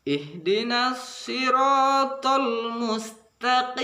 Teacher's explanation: Kadang-kadang kita pengucapannya so, kadang-kadang terlalu monyongkan mulut, terkesan tidak membunyikan so. So itu ujung lidah hampir bertemu gigi bawah, namun ada monyong sedikit, tapi di sini tidak perlu dimonyongkan kali karena di sini berbaris kasrah atau bawah.